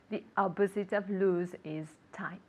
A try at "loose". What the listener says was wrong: Okay, now be careful with the pronunciation of loose, okay? It's with an S sound. Because if we say a Z sound, what does it mean? Lose and loose. So if we say it with a Z sound, it means perder. But if it's with an S sound, it means how do you